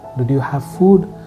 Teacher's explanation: The last word is going up. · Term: rising intonation